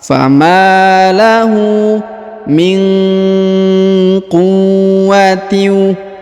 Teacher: nun sukun bertemu dengan qaf maka didengungkan dan disamarkan